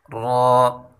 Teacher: را کی مخرج زبان کی پشت اور اس کا کنارہ جب ثنایا اور رباعی کے مسوروں سے ملے، یعنی سامنے والے دو دانت اور ان کے جو قریب دو دانت ہوتے ہیں جس کو رباعی کہتے ہیں ان کی مسوروں سے ملے تو یہ حرف ادا ہوتا ہے۔